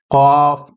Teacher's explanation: قاف یہ حلق کے تھوڑا سا اوپر سے ہلکا سا ادا کیا جاتا ہے قاف، اس کو آپ بڑی قاف بھی کہہ سکتے ہیں.